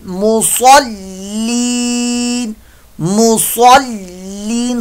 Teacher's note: स्वाद पर मोटा, सीन की आवाज के अंदर इसको तब्दील न कीजिएगा, मुसल्लीन नहीं, मुसल्लीन, वक्फ में मद्दे आरज।